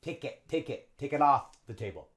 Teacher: notice how we link the K and the I.